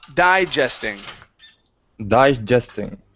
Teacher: The stress is at the beginning.